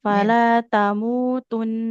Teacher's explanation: kalau mau berhenti di situ nunnya tuh ditahan dulu karena gunah dia